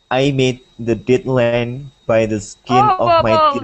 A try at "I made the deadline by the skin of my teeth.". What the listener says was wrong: you have to read slower and you have to read clearer. will not understand what you're saying.